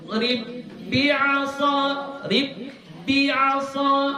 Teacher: Ba yang pertama masukkan kepada ba yang kedua. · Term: idgham